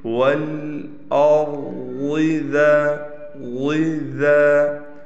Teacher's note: یعنی ضاد کو الگ کر کے پڑھنا ہے، ذال باریک ہے